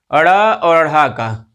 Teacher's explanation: हमारी जो जिह्वा है वो ऊपर जा कर के और एकदम झटके के साथ में नीचे आती है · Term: उच्छिप्त व्यंजन